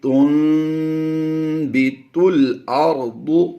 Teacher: ہم نے نون ساکن کو میم سے بدل دینا ہے، تو یہ آواز بن جائے گی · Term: اقلاب